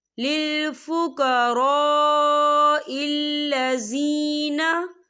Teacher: लिल फुक़राइल्लज़ीना, या देखिए लिल फुक़रा, खाली अलिफ से पहले ज़बर है और इस पर मद भी है, तो हम इसे 4 हरकत के बराबर खींच के पढ़ेंगे।